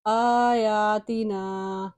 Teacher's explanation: کھڑی زبر کی وجہ سے ایک ایک الف کی مقدار ان دونوں کو ہم نے لمبا کیا ہے